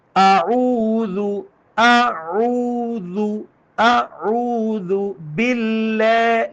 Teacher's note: ذال میں یہ سٹی والی آواز نہیں ہونی چاہیے، یہ نرمی کے ساتھ نکالنا ہے. ذال نرم حروف میں سے، میں نے اس کا مخرج بھی بتایا ہے.